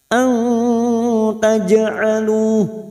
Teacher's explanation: An taj'alu jim sukun qalqalah sugro, kita pantulkan yang mati asli di tengah kalimat